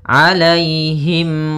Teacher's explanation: ada mim mati bertemu dengan huruf Gin maka dinamakan dengan izhar syafawi maka harus jelas Suara mimnya